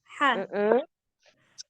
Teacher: Cara mengucapkannya dengan sedikit menekan katup epiglotis sambil menghembuskan udara. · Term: huruf H